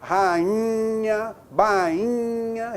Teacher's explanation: Bainha, rainha, você nasalizou o I. Opa, ele sofreu influência fonética, ele sofreu nasalização do NH, ou então ele não ficou sozinho foneticamente.